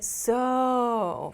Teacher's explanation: so is the most casual and you'll often hear native speakers when they say so they make the o sound really long to emphasize even more